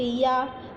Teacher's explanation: हमने या बोला तो हमारी जीभ कहीं पे भी टच नहीं करी। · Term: अंतस्थ व्यंजन